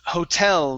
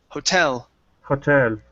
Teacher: this word here is pronounced Hotel the stresses at the end